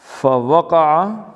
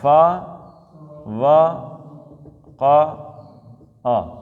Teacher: ایک حرکت ہے، ایک حرکت ہے، تو مطلب ہے ایک ہی حرکت پڑھنی ہے، لمبا آگے پیچھے کسی کو لمبا نہیں کرنا